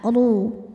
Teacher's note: Huruf ra dibunyikan secara tafkhim karena ra berbaris dhammah. Maka dibacanya tebal, pangkal lidah diangkat, ru